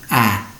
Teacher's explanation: in english we combine the ah and a sound into one ah so you drop your jaw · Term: diphthong